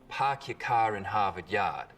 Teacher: The placement for that vowel sound in park your car in Harvard Yard. We call this the start vowel. In Boston, it's usually pretty fronted.